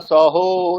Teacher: প্রথম দিনের সমস্যা, মানে অকারটাকে ওকার উচ্চারণ করা